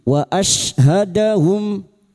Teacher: Syin sukun huruf syin wastul lisan atau tengah lidah.